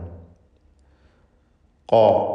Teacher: ഖാല അതിൻ്റെ മഖ്റജാണെങ്കിൽ അഖ്സൽ ലിസാനാണ്, നാവിൻ്റെ അങ്ങേ അറ്റമാണ്. ഖാ എന്ന് നന്നായി തടിപ്പിച്ച് തഫ്ഖീം ചെയ്ത് പറയണം, സ്വരഭാരത്തോടുകൂടി ഉച്ചരിക്കുക. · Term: ഖാഫ്